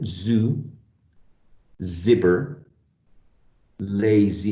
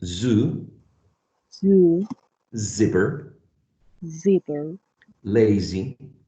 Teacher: so when we're saying Zoo the vocal cords are vibrating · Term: voicing